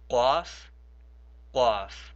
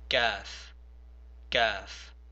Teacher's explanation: And then the next one is not from my throat, we just pronounce it normally, we say kaf. So the first one is a qaf from the bottom of your throat, and the second one is a kaf.